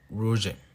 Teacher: una vibrante uvular que se utiliza en el francés en palabras como rouge